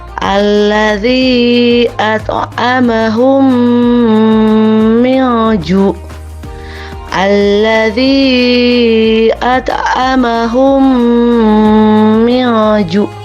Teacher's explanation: Jadi idgham mutamatsilain itu apabila mim mati bertemu dengan mim. Cara membacanya dengan memasukkan huruf mim disertai dengan suara gunnah sekitar 2 harkat.